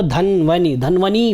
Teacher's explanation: छोटी ई है तो धन्वनि, धन्वनि बड़ी ई नहीं करनी है